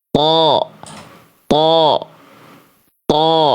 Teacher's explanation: bunyi vokal A-nya itu bisa tebal gemuk karena itu tadi pangkal lidahnya naik di dalam lidah, di dalam mulut saya itu pangkal lidahnya lagi begini.